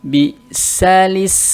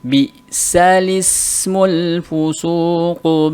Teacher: Ya, kalau kita baca bisal ismu, maka dinakalkan. Jadi hamzahnya yang tadi berharokat kasroh dipindahkan harokat kasrohnya ke lam, kemudian hamzahnya jadi hamzatul wasl, jadi tidak dibaca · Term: an-naql